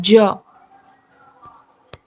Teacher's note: सघोष अल्पप्राण तालव्य स्पर्श संघर्षी व्यंजन